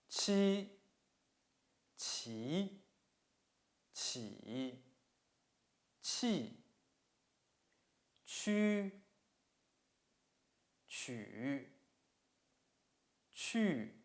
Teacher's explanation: The surface of the tongue touches the hard palate to form obstruction. The air breaks through the obstruction first and then comes through the narrow opening with friction.